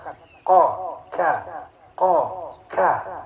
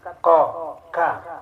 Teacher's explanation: Jadi lidah yang belakang sedikit terasa terangkat. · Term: Huruf qaf dan kaf